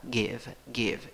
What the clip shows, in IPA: ˈgiv